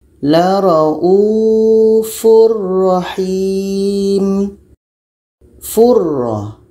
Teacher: tanwin masuk kepada ra dan tidak ada dengung. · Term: bila gunnah